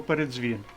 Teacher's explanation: звук ДЗ - це один звук оскільки він знаходиться в корені